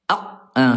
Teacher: Dari segi suara huruf qof ayah bunda dia syiddah dia kuat nih ya. Dia kuat kalau sukun enggak bisa lanjut suaranya tertahan ya.